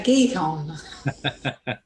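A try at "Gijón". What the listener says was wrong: It's he hon. He hon. No G. He hon. He hon. He hon. There's an accent on the O, so the stress has to go on there. He hon.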